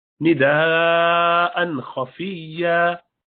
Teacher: نداء خفیہ, حمزہ ہا عین ہا غین خا میں سے ہے, تو اس کے تنوین 2 زبر کے بعد خا آیا تو اظہار کریں گے, کھینچیں گے نہیں, لمبا نہیں کریں گے